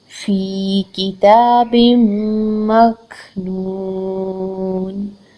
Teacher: فا زیریا فی، دو حرکت لمبا کریں گے، یا مدہ ہے، مد اصلی بالیا ہے